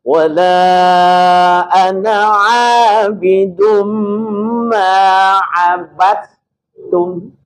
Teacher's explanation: Ini banyak yang membaca abattum itu masih ada unsur dalnya. Ya, unsur dalnya itu harus sirna sama sekali. Karena pertemuan antara dua huruf yang sama-sama huruf istifal. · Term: full ta